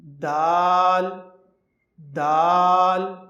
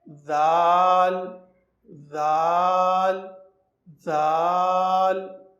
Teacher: دیکھیے دال اور ذال میں یہ فرق ہے کہ آپ کی جو زبان ہے ذال میں, یعنی کہ جو آپ کو حرف نظر آ رہا ہے ذال, اس میں تھوڑی سی باہر نکلے گی